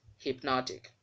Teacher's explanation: But in this case, the word has changed because you have a suffix now ending with IC. So the stress will also move its position to the second syllable. And once it gets to that second syllable, the sound of the letters there will also change.